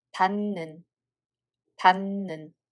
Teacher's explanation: When hieut batchim meets a following ㄴ sound consonants the sound of hieut changes to ㄴ sound consonant as well.